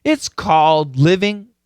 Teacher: and this yeah caused a lots of problems I'm guessing uh the stop D and then the dark L kind of put together